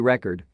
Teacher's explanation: if the stress is placed on the last syllable of the word ie record the word may act as a verb then mean to document or keep track of something comparatively if · stress is placed on the first syllable of the word ie record the word may act as a noun